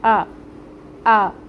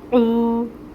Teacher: حمزہ جو ہے یہ محقق ادا ہوتا ہے، آ یہ ساؤنڈ آئے گی اس کی، اور عین اور واو کو جب ہم ملائیں گے تو آئے گی او۔ عین کو اس کے مخرج سے نکالنا ہے، وسط حلق سے۔